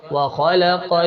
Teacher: یہاں پہ بھی خا کو موٹا پڑھنا ہے، قاف کو موٹا پڑھنا ہے